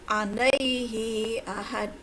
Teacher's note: Ada huruf dal mati di wakaf atau diberhentikan di wakaf, maka qalqalah kubro ya.